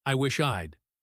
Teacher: I wish I had often becomes I wish I'd, with that D sound almost disappearing into the following word